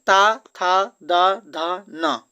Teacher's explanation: ता था द ध न का उच्चारण स्थान क्या होगा तो यह होगा दंत